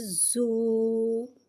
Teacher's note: اور زا کے اوپر پیش آ رہا ہے، پیش کو ہونٹوں کی گلائی سے ادا کر کے پڑھیں گے